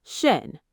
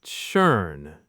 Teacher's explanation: Now try to say the E in bed instead. Lips round for O, say E without moving them.